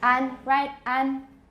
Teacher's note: That's a more front A. It's a middle to front A